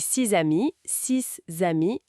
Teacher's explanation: Six amis avec la liaison en Z